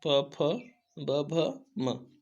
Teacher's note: ओष्ठ होते हैं प फ ब भ म